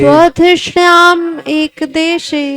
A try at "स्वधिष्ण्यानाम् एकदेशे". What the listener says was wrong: ना भी छूट रहा है, स्वधृष्ण्या नाम एक देशे,